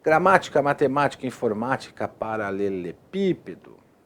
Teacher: a antipenúltima sílaba é forte, é tônica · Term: antipenúltima sílaba tônica, proparoxítona